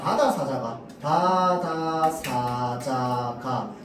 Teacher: 예사 소리는요, 성대 근육이 긴장되지 않고요, 숨이 거세게 나오지 않는 일반적인 자음 소리